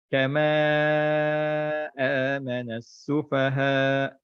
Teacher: mat jaiz munfasil. Yang sepatutnya kita baca 4 atau 5 harakat.